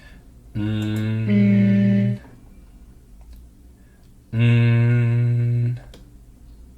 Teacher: we have our tongue coming up right to the alveolar ridge, right here.